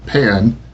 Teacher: If you hold your hand very close to your mouth and say the word pen clearly and naturally, you will feel a slight puff of breath